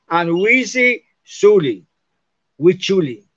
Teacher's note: la S más S es igual a che